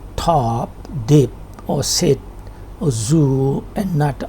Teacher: These are sounds formed with the front part of the tongue on the alveolar ridge, which is the rough bony ridge immediately behind and above the upper teeth. The area is told to you that it is that bony ridge, but it comes before the palate and after the teeth. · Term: alveolar sounds